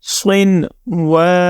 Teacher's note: ہم نے واو کو زبر کے ساتھ جب پڑھا تو ہم نے اس کو لمبا کیا کیونکہ اس کے آگے الف ہے